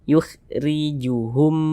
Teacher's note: maka huruf r-nya dibaca tipis dibaca tarkik · Di sini huruf ra memiliki harokat kasrah nih, baris satu mereng di bawah huruf ini namanya harokat kasrah. Maka huruf ra-nya dibaca tipis, dibaca tarkik. Sehingga pangkalisan kita tidak perlu naik terangkat ke atas, kita tipiskan yukhrijuhum.